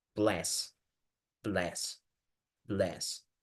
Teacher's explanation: Está este sonido que es una fusión entre la A y la E.